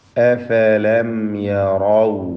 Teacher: സക്കിന മീമിന് ഇൽഹാർ ഷഫവി നൽകി മണിക്കാതെ വെളിവാക്കേണ്ടതാണ്. യറൗ എന്നതിലെ റായിനെ തഫ്ഖീം ചെയ്ത് ഉച്ചരിക്കണം.